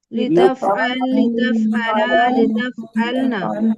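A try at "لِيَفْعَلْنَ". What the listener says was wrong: আবার লিতাফআলনা বলতেছেন কেন? লিয়াফআলনা এখানে দেখেন ইয়া মানে হচ্ছে সে একজন পুরুষ, এখানে ইয়া মানে হলো সে, কিন্তু এখানে সে না, কারণ এখানে দ্বিবচন হয়ে গেছে, এই জন্য তারা দুজন পুরুষ। এখানে দ্বিবচন করা হয়েছে কি আলিফ মাদ দিয়ে।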